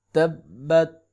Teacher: تا زبر با تب، با زبر تا بت، تبت، تا پہ قلقلہ نہیں ہوگا، اس بات کا خیال رکھیں۔